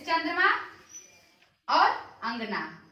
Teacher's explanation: अनुनासिक क्या हो गया, ऐसे चंद्र बिंदु, इसमें ध्वनि या वायु नाक व मुंह से निकलती है, जैसे चंद्रमा और अंगना।